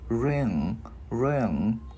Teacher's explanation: Cái mình ngân cái chữ ng ra